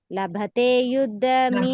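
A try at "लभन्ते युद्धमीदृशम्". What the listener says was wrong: ಲಭೆ ಇಲ್ಲಿ ಲಭತೆ ಅಲ್ಲ ಲಭಂತೆ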